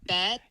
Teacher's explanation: the R sound or phoneme just disappears in bared, and then it makes the previous vowel longer. And this particular vowel just happens to be epsilon. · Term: long epsilons